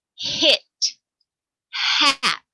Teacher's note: like when you're checking to see if your breath is bad it's literally a puff of air it has no sound of its own it takes on the sound of the vowel that follows it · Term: bad breath sound